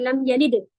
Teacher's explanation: दाल जब साकिन कर दिया जाता है तो कलकला होता है